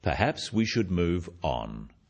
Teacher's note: it is said in a firm way with a falling intonation at the end practice with me perhaps we should move on this falling intonation · this falling intonation makes it a more definite statement rather than a suggestion